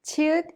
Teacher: is an aspirated sound with the burst of air